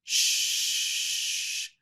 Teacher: SH can be held out for a long time because the air is not restricted very much.